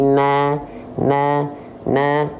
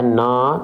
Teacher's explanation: sini dia berharakat baris atas fathah basicnya dibaca dengan vokal a kalau tetap dibaca dengan vokal a maka dia adalah huruf yang tipis kalau dia jadi vokal O baru dia huruf yang tebal